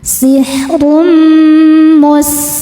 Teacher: Karena tanwin dammah menghadapi huruf mim, maka tanwin ini dimasukkan ke mim sihrum sambil tahan didengungkan. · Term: idgham bunah, idgham bi gunnah